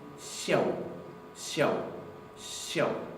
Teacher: No se pronuncia literalmente siau, siau, sino que se palataliza. Se pronuncia casi como si esta S fuera una SH seguida de una yod.